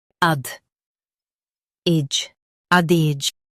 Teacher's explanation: ADAGE. Stress AD and keep IJ light. Ad. Ij.